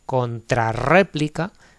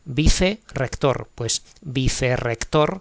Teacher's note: Y también se escriben con R doble las palabras derivadas y compuestas cuyo segundo formante comienza por R, de manera que el sonido vibrante múltiple queda en posición intervocálica. O sea que sigue cumpliéndose esto que han dicho de cuando el sonido es fuerte y va entre dos vocales, ¿no?